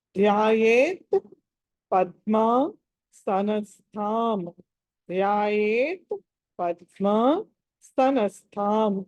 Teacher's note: దీంట్లో లాస్ట్ థా ఏదైతే ఉందో అది మహాప్రాణము